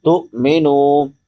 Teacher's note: تو مینو، نون کے بعد واو مدہ ہے، واو ساکن ما قبل ضمہ یعنی پیش ہے، تو اس کو 1 الف کے برابر لمبا کریں گے